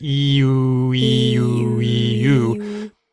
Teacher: When you're saying the E, everything's more toward the front of your mouth, toward your teeth. But when you say oo, it's back farther in your mouth. It's called a back vowel.